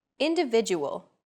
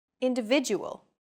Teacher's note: the stressed syllable VI in individual is deemed more important so it's pronounced longer than all other syllables